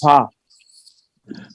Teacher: یہ آواز بھی ہے اور ساتھ سانس بھی جاری ہو رہا ہے